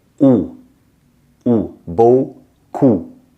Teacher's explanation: Here you're going to say ou, really tight circle.